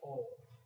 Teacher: जब इनका उच्चारण करते हैं तो जो हमारे जो ये होठ हैं ये एक वृत्ताकार हो जाते हैं